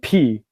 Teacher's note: it's just a puff of air you open your lips and air comes out